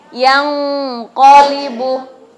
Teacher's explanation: Yang qolibu itu maksudnya samar, disertai gunnah. Berarti ditahan, jangan langsung yang qolibu, tidak, tapi disertai dengan gunnah. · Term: ikhfa